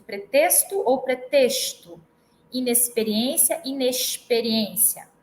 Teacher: podemos ter variação de pretexto ou pretexto inexperiência inexperiência né então tanto pode ser o som C Como che vai depender do dialeto